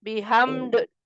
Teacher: Kalau dalnya sukun jadi kolkola